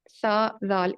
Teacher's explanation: یہ آپ کے جو زبان کا کونا ہے، رأس اللسان، یعنی اس کو اگر آپ اوپر اگلے دو دانتوں کے ساتھ ٹچ کریں تو پھر سا زال ادا ہوتا ہے. سا زال، اس کو آپ پریکٹس کریں، اس میں سیٹی کی آواز بالکل بھی نہیں ہوتی.